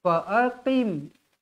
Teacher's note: Fa'aqim, qim huruf qaf tebal. Fa'aqim qaf walaupun berbaris bawah tetap jangan hilangkan sifatnya, tetap juga tebal.